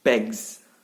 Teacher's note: Bags is ended and we use s now as sound, but the s is modified because to make it compatible with g, with g, with back, you know what I mean, back, with the g sound. So the s sound become z. So many people say bags, more like z, bags.